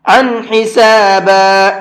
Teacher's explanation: ہا اظہار کے حرفوں میں سے ہے، تو اب یہاں پر تنوین کے اندر غنہ اخفا نہیں کریں گے بلکہ اس کو اب صاف صاف پڑھیں گے۔